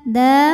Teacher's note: karena Dal barisnya fathah panjang maka Dal panjang dua harakat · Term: Mad Thobi'i muqaddar